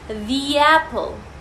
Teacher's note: there is a silent y in front of that a · যখন আমরা the ওয়ার্ডটাকে একটা vowel সাউন্ডের সামনে প্লেস করি তখন আমরা এটাকে কানেক্ট করে দিই একটা সাইলেন্ট y এর সাথে